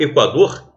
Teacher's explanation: essa situação em Equador por exemplo até on tongo crescente porque primeiro vem a semivogal u depois vem a vogal a